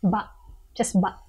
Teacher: You don't need to really expel air when you go like ba. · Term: glottal stop